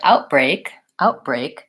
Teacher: outbreak outbreak what I think we tend to do there is the stop T happens further back maybe all the way back in my throat I'm still stopping the air but I might not be saying outbreak with lifting my tongue